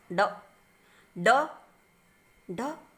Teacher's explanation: उत्क्षिप्त इसको हम ऐसा समझ सकते हैं, उत्क्षिप्त यानी झट से छूकर छिप जाना। जीभ जो है उसको झटके से तालु को छूती है और हट जाती है · अब इसको याद करने की ट्रिक हो जाएगी, उल्टी नोक तालु को स्पर्श करती है, उल्टी नोक तालु को स्पर्श करके झटके से हट जाती है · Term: उत्क्षिप्त व्यंजन